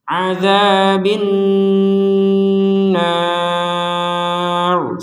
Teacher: Ada nun bertasydid, kita baca dengan dengungan.